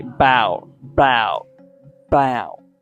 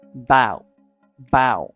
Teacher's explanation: Native speakers will not ever say about, but instead the connected speech sound for this can be bow, bow, bow. Okay, the A is actually removed and we pronounce it like bow, bow